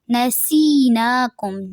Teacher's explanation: نا پہ قائم مقام مد اصلی ہے، اسے تھوڑا سا لمبا کریں گے